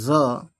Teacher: तलवे को ऊपर ले जाओ, दांतों के ऊपर वाले मसूड़े के पास, वहाँ से आवाज़ निकाल लो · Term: जाल